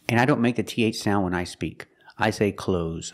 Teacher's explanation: Just use the zebra sound, zzz, at the end.